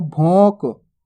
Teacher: यानी कि नाक से भी उच्चारण करना है। देखो भोंक। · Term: अनुस्वार की मात्रा